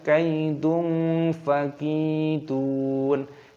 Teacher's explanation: dhammah tanwin bertemu dengan fa, ini hukumnya dibaca ikhfa. Jadi disamarkan